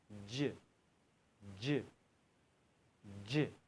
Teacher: जीम की आवाज दांतो के बीच से निकलती है